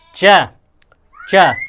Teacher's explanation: जीभ और तालु स्पर्श हो रहा है तो च वर्ग हो जाएगा